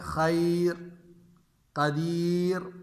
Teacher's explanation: را ساکن سے پہلے ساکن حرف یا ہو، یعنی را ساکن ہے، اس سے پہلے والا حرف جو ہے وہ بھی کیا ہے؟ یا ہے، تو ہر صورت میں را باریک ہوگی